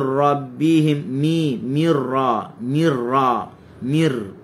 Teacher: Takrir kena ada pada huruf ra. Jangan mir rabbihim, tarik, gulung lidah ke dalam, tak boleh.